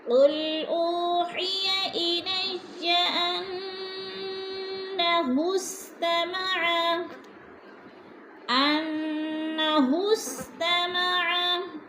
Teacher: انہ کی نون مشدد ہے، غنہ کریں گے، سختی سے جمع کر پڑھیں گے